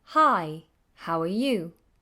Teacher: you notice there's a dip a certain little melody that we follow